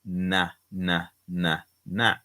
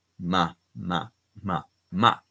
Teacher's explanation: the N is with a tongue, na, na, na, na and the M is with our lips pressed together